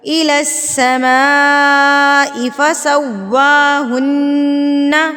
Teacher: سین کے اوپر تشدید ہے، الس مضبوطی کے ساتھ، سیٹی کے ساتھ.